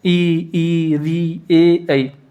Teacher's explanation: जीभ की आगे के हिस्से से बोले जाते हैं। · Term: अग्र स्वर